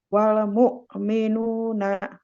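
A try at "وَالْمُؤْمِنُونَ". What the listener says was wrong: Ya, naknya jangan bunyi. Jangan nak, nah. Wal mu'minuna. Bukan nak, tapi nah. Kalau nak tuh berarti ada hamzanya.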